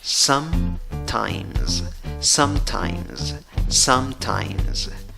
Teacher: aunque esta palabra en la escritura acaba con S, la pronunciación va con Z.